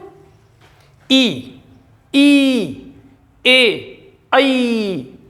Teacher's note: जीभ के अगले हिस्से से बोले जा रहे हैं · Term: अग्रिय